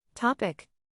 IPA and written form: ˈtɑː.pɪk (Topic)